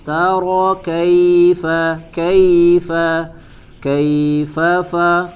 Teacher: Taro kaifa, kaifa, kaifa, fa, huruf fa, ya, ada makhrajnya, ya, ditempelkan bagian ujung gigi seri bagian atas ke perut bibir bagian dalam, ya, di bibir bawah